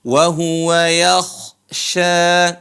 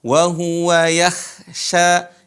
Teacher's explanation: huruf k ditebal wahua yakhsya bukan dibaca wahua yaksya yak yakh yang benar adalah yakhya jadi tebal atau disebut dengan